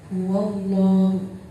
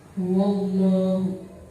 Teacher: Di situ ada lam jalalah didahului dengan huruf wawu yang berharokat fathah, maka cara bacanya tebal. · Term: lam jalalah tafhim